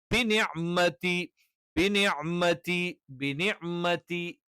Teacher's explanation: നാവിന്റെ അറ്റം മുൻപല്ലുകളുടെ മോണയുടെ പിൻഭാഗത്ത് ലാമിന്റെ ഉത്ഭവസ്ഥാനത്തിന് പിന്നിൽ വെച്ചുകൊണ്ടാണ് ന ഉച്ചരിക്കുന്നത്.